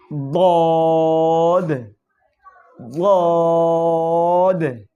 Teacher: জিহ্বার গোড়ার কিনারা উপরের মারির দাঁতের গোড়ার সঙ্গে লাগাইয়া